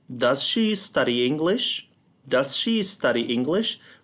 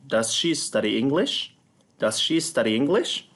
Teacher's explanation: Remember that this is a yes-no question, so it has a rising intonation.